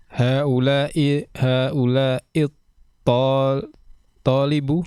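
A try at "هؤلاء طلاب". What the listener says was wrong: Loh, kok tolibu nih? toknya panjang atau enggak? Tullabu. Haula'i tullabu.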